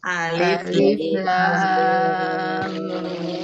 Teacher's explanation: Perhatikan Ibu, lamnya itu di sana panjang ya. Jadi jangan Alif lam, tapi ladu alif lam mim.